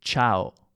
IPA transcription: ʧao